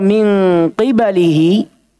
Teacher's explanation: hurufnya huruf tebal tapi khusus untuk keadaan ketika qaf dikasrah maka dengungnya dibaca tipis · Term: tafhim nisbi